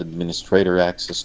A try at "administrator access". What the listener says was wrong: I think you stressed the stray syllable and I would stress the min administrator